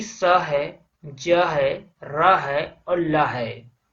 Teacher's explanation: Important है वत्सर्य से, मतलब दांतों के मूल से। तो जैसे कि स है, ज है, र है और ल है, इसे वत्सर्य व्यंजन कहा जाता है।